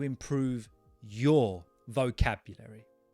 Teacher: Can you see that I put the emphasis on your vocabulary?